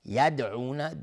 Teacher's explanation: دال اینجا قلقله میخواد